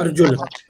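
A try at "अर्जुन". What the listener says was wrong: Arjun. So it is not Arjuna, it is Arjun. But we should say Arjun.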